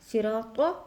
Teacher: صاد حروف مثقالیہ سے ہے، را کو بھی ہم پر کریں گے، صاد کو بھی پر کریں گے